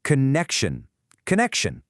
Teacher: It's got 3 syllables. The first one's kind of soft, ka. Then you put the stress on the middle one, connect, and it finishes with shun.